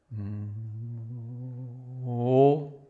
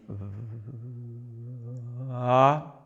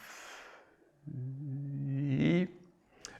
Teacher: As you can hear, the M is with normal loudness, then I go over with slow motion to the A or to the O, and the vowel becomes more smooth and more quiet, and then I go up to normal loudness